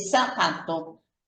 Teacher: vamos a pronunciar palabras que se escriben con Z como zapato, como si fuera una S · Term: ceseo